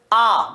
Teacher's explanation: वह स्वर जिसके उच्चारण में मुख पूरा खुला रहता है या सबसे ज्यादा खुला रहता है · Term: विवृत स्वर